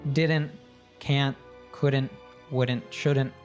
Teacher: with didn't anytime we have a contraction that's NT again we we tend to cut off the T sound